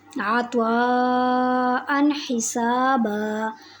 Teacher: نون تنوین کے بعد ح آ گئی ہے، تو نون تنوین پر اظہار ہوگا، غنہ نہیں ہوگا۔ عطواء حسابا، اب میں نے نون تنوین پر غنہ نہیں کیا بلکہ اظہار کیا، میں نے نون تنوین کو ظاہر کر کے پڑھا۔